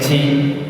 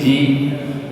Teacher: Adapun dalam bahasa Arab itu tidak ada aliran nafasnya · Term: huruf jim